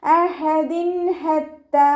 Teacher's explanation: തെൻവീനിന് ശേഷം ഇവഹാറിൻ്റെ അക്ഷരമായിട്ടുള്ള ഹ വന്നു. തെൻവീനിലുള്ള നൂനിൻ്റെ സൗണ്ടിനെ വ്യക്തമാക്കി മണിക്കാതെ ഉച്ചരിക്കുക.